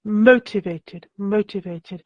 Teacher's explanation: so motivated the stress is on the first syllable